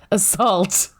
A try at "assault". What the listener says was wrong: Well, you didn't really fucking pronounce the A in front of assault there. Yeah, it's salt. Salt goes up.